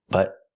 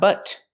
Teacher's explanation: We hear the T in but as a stop T.